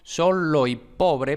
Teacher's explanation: hay una sinalefa entre la O de solo y la conjunción y